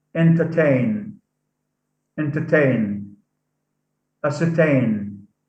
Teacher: The word entertain, ascertain. So here, the suffix ain carries the primary stress. It's said louder. It's said louder than the base.